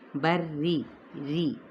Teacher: وَيَعْلَمُ حرکات کو لمبا نہیں کریں گے، ما الف مدہ، فی البری اب یہاں فا کی زیر کو لام کے ساتھ ملائیں گے، اب را تشدید نیچے زیر ہے یعنی کسرہ، تو ہم اسے باریک پڑھیں گے، بری ری، ٹھیک ہے، ری یعنی پر کر کے نہیں ادا کرنا۔